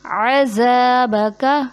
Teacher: کاف کے زبر کو نہیں کھینچتے، جیسے وَنَرْجُو رَحْمَتَكَ وَنَخْشَى عذابک، یہاں پہ ذال کو زا بنا دیا جاتا ہے جیسے اس میں سیٹی لے آتے ہیں.